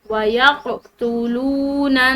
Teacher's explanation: قاف حروف قلقلہ میں سے اس کو ہلاتے ہوئے پڑھیں گے